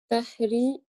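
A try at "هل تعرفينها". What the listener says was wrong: Toute la phrase, tu n'as pas fait d'erreur, machallah, sauf que le A, tu as un peu de mal à le prononcer. Hal ta'rifinaha. Ta, voilà, c'est pas un ra, c'est vraiment une lettre qu'il faut vraiment que tu essaies de t'habituer à dire.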